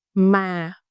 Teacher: When you use this tone, you fall in your voice a little bit. For example, mà, which means but. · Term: huyền